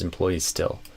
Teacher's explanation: So just connect those S's together basically. Employees still, no vowel between them.